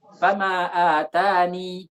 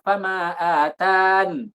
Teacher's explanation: cara waqafnya adalah boleh dengan ya, boleh juga dibuang ya-nya langsung nun